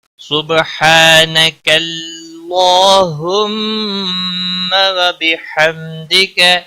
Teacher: حا الف مدہ ہے، ایک الف کے برابر کھینچ کر پڑھیں گے